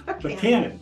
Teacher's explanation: Buchanan with an accent on the second syllable.